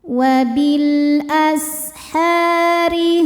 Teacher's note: Huruf ro dibaca secara tarkik karena barisnya kasrah. Cara bacanya ditipiskan. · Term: tarqiq